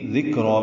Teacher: ذکر میں دال باریک، کاف نرمی سے ادا ہوگا، را پر پڑھیں گے، ذکر، کاف ساکن پہ ہمس ہے.